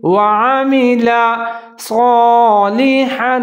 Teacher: کے نیچے زیر ہے، والیوم الآخر وعمل صالحا، صاد الف صا، اس کو صاد کو موٹا کر کے پڑھنا ہے